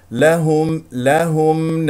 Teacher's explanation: الهاء مضمومه نضم الشفتين فيها الميم مظهره